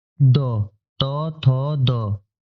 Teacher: इसकी जो जीभ होगी आपको दांतों को स्पर्श कर रही है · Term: दंत्य